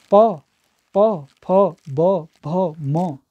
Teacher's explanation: जो हमारे होंठ हैं दोनों आपस में मिल रहे हैं, तो इसलिए ओष्ठ या द्युष्टम कह रहे हैं।